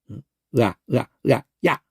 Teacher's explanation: 의아를 동시에 내면 야가 되는. 의아 하다가 동시에 붙여버리면 빨리 붙여버리면 야가 돼요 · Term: 복합 모음